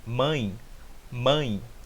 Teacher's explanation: O A tem mais potência que o E.